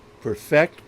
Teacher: perfect with the stress on the second syllable